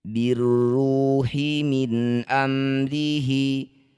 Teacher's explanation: kalau yang syamsiyah tidak usah dibaca atau diabaikan. Birruhi, jadi bacanya langsung pada huruf yang bertasydid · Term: idgham syamsiyah